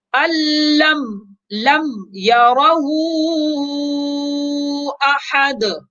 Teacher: اب یہاں پر دیکھیے لم میم ساکن ہے، اس کے بعد یا ہے، لہذا میم میں غنہ نہیں کریں گے، میم کو ظاہر کر کے واضح کر کے پڑھیں گے